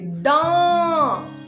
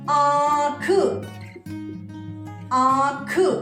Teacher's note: इसको बोलने के लिए गले और नाक की दोनों से आवाज निकलती है, गले और नाक से। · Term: अनुनासिक